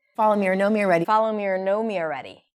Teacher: The or is completely reduced. You can barely hear it. And you might think that she's saying a completely new word.